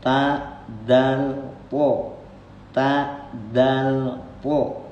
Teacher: ujung lidah kita dirapatkan dengan pangkal gigi seri bagian atas, tumbuhnya gigi yang atas